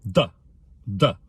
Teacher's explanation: We hit the first syllable really hard. The D is not an English T sound. It's a dental D.